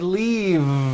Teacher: it's not leaf with an unvoiced F I should have said leave with a voiced V sound